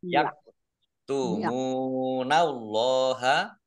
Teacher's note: Allahnya dibaca tebal karena harokat di depannya fathah. Lam fathah berdiri matobi'i panjang 2 harokat.